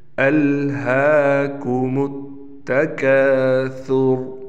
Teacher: हा पर कड़ा ज़बर है, इसलिए इस हा को हम एक अलिफ के बराबर खींच कर पढ़ेंगे